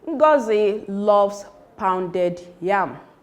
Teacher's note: The emphatic stress is on pounded, not on loaves, not on ngozi, not on yam.